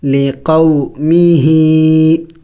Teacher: ہا کے نیچے کڑی زیر ہے، اس کو تو ایک الف کے مقدار لمبا کرنا ہوگا